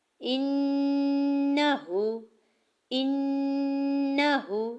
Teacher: ہا کی پیش کو بالکل بھی نہیں کھینچنا کیونکہ ہا کے اوپر سنگل پیش ہے اور اسے جلدی سے ادا کریں گے